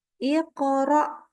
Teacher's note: mengeluarkan sifat qalqalah pada huruf qaf bersukun